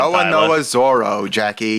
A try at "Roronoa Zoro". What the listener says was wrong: You're like eliding the R. Is that how you say it? You're saying Roronoa. I'm seeing Roronoa. Roronoa Zoro.